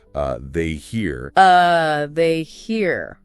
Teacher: The emphasis is on they and here and the are almost disappears into that soft little uh sound at the beginning. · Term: weak form